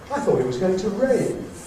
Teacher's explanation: now there rain is new information so it gets the nucleus